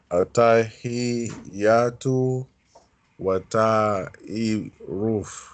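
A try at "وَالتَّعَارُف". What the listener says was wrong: There's a fatha here. Wa ta'aruf.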